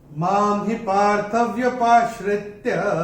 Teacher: पहले चरण में मां के ऊपर अनुस्वार के बाद का अक्षर है ह, और अनुस्वार के बाद जब ह आएगा तो अनुस्वार का उच्चारण होगा म